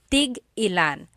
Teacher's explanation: So tig ilan, when there's a hyphen in it, you have to have that glottal stop.